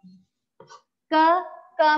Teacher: क में जब हम बोलते हैं तो उसमें अ की ध्वनि आ रही है